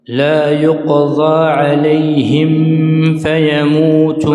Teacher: الميم شفوي والفاء شفوي والواو شفوي والباء شفوي، لكن هنا الميم جاورت الفاء، فعلينا أن نظهر الميم جيدا. لا يقضى عليهم عليهم فيموت، ضم الشفتين ثم اقرأ حرف الفاء.